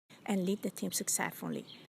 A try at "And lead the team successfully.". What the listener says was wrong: There's that word lead again. Not lead the team, but lead the team. Really stretch out the vowel. Lead the team. And lead the team. And lead the team.